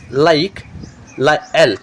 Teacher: Air passes from the sides of tongue.